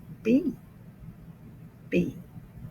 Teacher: Did you notice I had to put my lips together to say B?